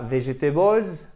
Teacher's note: Vous ne pourriez pas faire votre accent tonique sur la première syllabe qui est la clé, je vous rappelle, ce fameux accent tonique, vegetables.